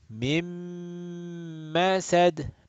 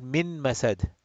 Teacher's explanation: So, Noon got assimilated into Mim.